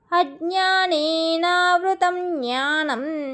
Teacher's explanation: జ్ఞాని కూడా మనం నాజిల్ సౌండ్ లెక్క పలకాలి, ముక్కుతో చదవాలి